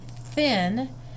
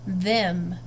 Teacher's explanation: the letters TH can stand for two slightly different sounds. Voiceless TH, as in thin, and voiced TH, as in them.